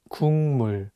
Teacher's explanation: But it's paired with the nasal sound 미음, so it changes the pronunciation from a G sound to an NG sound, and you need to read it as 국물.